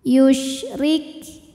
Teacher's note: Huruf ra dibunyikan secara tarqiq karena ra berharokat kasrah, maka ra dibunyikan dengan tipis. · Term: ro dibunyikan dengan tipis